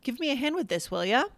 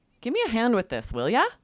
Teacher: So it's sort of avoiding that sing-songy irritation, or the sing-songy tone that sounds irritated